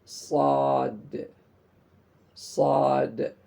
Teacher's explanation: Qalqalah dari dalnya itu harus dibunyikan.